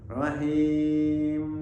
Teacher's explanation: ketika kita mengucapkan mim dalam keadaan wakaf seperti rahim itu jangan lupa terakhir adalah bibir luar atas dan bawah bertemu